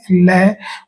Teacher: पार्श्व शब्द का मतलब होता है अगल-बगल या साइड से। यानी ऐसा व्यंजन जिनका उच्चारण करते समय मुख के अंदर जहवा मुंह को बंद कर देती है और हवा दोनों ही तरफ से निकल जाती है। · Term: पार्श्विक व्यंजन